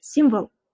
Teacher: Simvol degan so'zingizda ham e'tiborli bo'lingki, ustoz nima deyapti? O harfini deyarli o'qimay ketyapti. Simvol demayapti yoki simval demayapti.